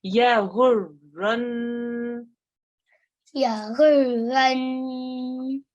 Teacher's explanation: It's a noon mushaddad. What do we do when it's a noon mushaddad? We prolong for 2 seconds. We make that nasal sound, don't we? Which is called Ghunnah.